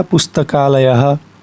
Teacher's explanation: पुस्तक के बाद अ था, फिर आलय में पहले आ है लेकिन जुड़ करके केवल आ बचा, पुस्तकालयः। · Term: दीर्घ संधि